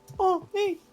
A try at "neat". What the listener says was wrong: No, neat, not knee.